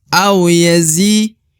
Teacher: di depan huruf zi terdapat ya sukun atau ya mati, maka zi dipanjangkan 2 harokat